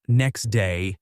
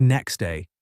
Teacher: In phrases like "next day," the T in next can become very soft, almost disappearing, which may make it sound like next day.